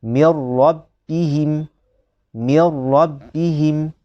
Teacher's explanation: tidak ada dengung. Hanya ada idgham saja. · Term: idgham bila gunnah